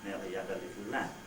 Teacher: okay each syllable more or less the same amount of time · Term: French accent